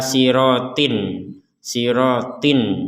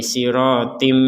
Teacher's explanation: jadi yang awalnya kita membacanya Ila sirotin sirotin maka sekarang menjadi sirotim disertai dengungan